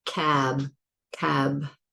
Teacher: When I say cab, I can't lengthen the B. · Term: stops